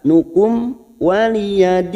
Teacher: mim sukun bertemu wau Idhar syafawi dibaca jelas